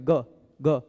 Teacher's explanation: इसमें ग का उच्चारण स्थान कंठ है